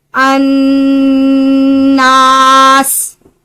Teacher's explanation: ناک سے آواز نکالنا، اور ایک حروف جتنا لمبا، ایک الف جتنا لمبا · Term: गुन्ना